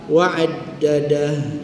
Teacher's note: Ha bulat kita, ya, matikan dengan waqaf ha.